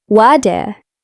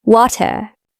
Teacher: In the middle of words like water or better, AME often uses a soft D sound or a flap T, so water can sound like water.